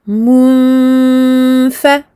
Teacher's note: On sent la runna, on entend ce son qui provient et du nez et de la bouche. On prolonge cette runna.